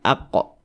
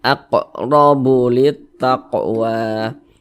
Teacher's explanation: Ini huruf qaf, dia sukun, kita pantulkan aqo begitu. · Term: huruf qalqalah